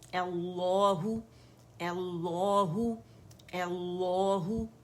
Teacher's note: ہم نے ایل لو نہیں پڑھنا, پہلا لام باریک یا پہلا موٹا دوسرا باریک نہیں کرنا, دونوں موٹے پڑھنے, کیونکہ مشدد کے لیے ایک ہی قانون ہے.